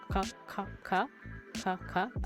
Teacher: a back K made further back in the mouth